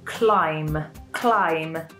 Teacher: climb is spelt with a B at the end, but we don't really pronounce this letter. We say climb, climb. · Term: silent B